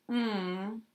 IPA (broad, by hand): ŋ